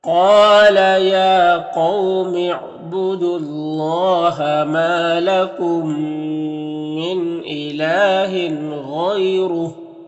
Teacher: میم ساکن کے بعد میم ہے تو میم کو میم سے ملا کر غنہ کے ساتھ پڑھیں گے، اس کو ادغام شفوی کہتے ہیں۔ · یہاں پر تنوین کے بعد غین حروف حلقی میں سے تو تنوین میں اظہار حقیقی ہوگا